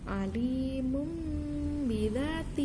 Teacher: Jadi suara nunnya kita ganti menjadi suara ba, begitu.